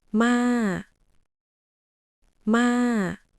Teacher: Drop your voice down. Almost like you're sighing or tired, say, Ma. Ma. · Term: low tone